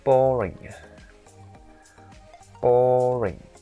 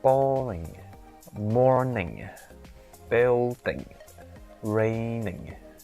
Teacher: So when you pronounce the words that ends with ing, you have to start with a high pitch intonation and you end the ing pronunciation with a low pitch intonation. So you only do that if you were to say it at the end of the sentence.